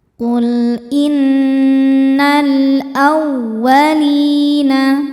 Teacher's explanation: Wau tasydid yang tidak didahului tanwin atau nun sukun. Jangan ditahan bacanya. Cukup dibaca menggunakan nabr. Naikkan intonasi suara kita.